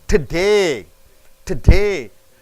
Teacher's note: the preposition to usually reduces so much that it is like dropping the vowel. So to, you don't say T-O, to.